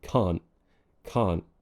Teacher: imagine the te is there but you kind of swallow it you don't actually produce it we tighten something around here called the glotis and that's what · you might hear many native speakers including myself drop the T at the end of words · For example, instead of saying can't, I might say can't, can't. Now, what we're doing here is glottalizing. It's a glottal stop.